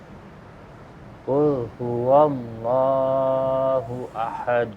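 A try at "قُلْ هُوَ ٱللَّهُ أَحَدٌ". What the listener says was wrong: Qalqalahnya. Hu ahad. Ahad.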